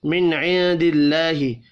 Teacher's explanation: نون ساکن کے بعد عین ہے، اظہار حلقی ہوگا، غنہ نہیں ہوگا